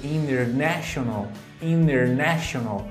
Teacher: a sílaba tônica está no NE